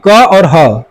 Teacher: क वर्ग और ह ये कंठ से निकलते हैं।